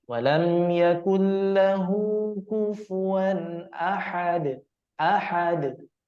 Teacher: pada kalimah ahad, nah qalqalah kubronya mesti diperjelas